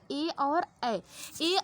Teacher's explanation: ए और ए के उच्चारण में कंठ और तालु दोनों के सहयोग की आवश्यकता होती है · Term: कंठ तलव्य